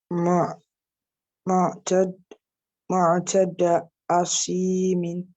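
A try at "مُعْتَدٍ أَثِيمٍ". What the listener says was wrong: Mu'tadin. So the rule of stopping here, you will not. Asim. So here now you will not say asimin.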